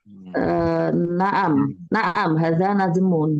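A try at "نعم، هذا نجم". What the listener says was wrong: Iya. Naam, hada najmun.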